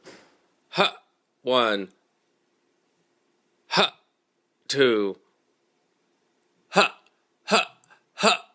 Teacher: the glottalization is the same sound that one hears when a quarterback uh says uh the words hut hut one Hut two without an actual t · Without an actual T, the hut is created by the glottis flapping over the top of the air tube.